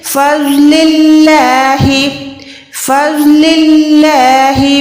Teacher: अल्लाह के नाम से पहले अगर ज़बर या पेश आएगा तभी हम अल्लाह के नाम को मोटा रखेंगे, वरना ज़ेर के साथ अल्लाह का नाम बारीक अदा होता है। ज़ौद को मोटा रखें, अल्लाह के नाम को बारीक रखें।